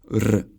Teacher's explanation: The Czech R is rolled like in Italian or Spanish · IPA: [r]